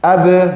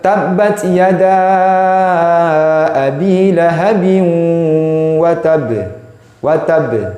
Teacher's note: Mana qalqalahnya? Ketika berjauhan 2 anggota pengucapan, bibir atas dan bibir bawah berjauhan, berjarak, saling berjauhan. Ab. Jadi berpisah dia.